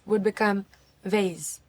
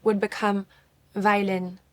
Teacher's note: The French V is softer and smoother than the American V that contains a lot of vibrations. So we have to bring fewer vibrations and lower your teeth a little bit more behind the bottom lip.